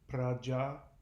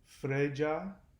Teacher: So P's become F's, and ah sounds become more like a sounds.